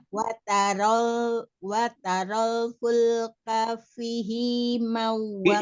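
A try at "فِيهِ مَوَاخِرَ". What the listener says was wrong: Fi-nya bukan fihi. Kalau fihi, pi-nya dibaca pendek, hi-nya dibaca panjang. Terbalik. Fihi mawa, bukan fihi mawa, bukan.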